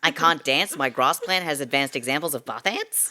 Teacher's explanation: the high-rising terminal or upward inflection, the way that we sound like we're asking questions all the time.